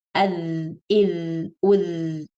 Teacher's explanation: So you kind of hear the vibrating sound, the way your phone makes sound when you get a message when it's on vibrating mode. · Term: dhal